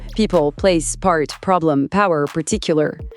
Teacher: le son P avec son petit souffle d'air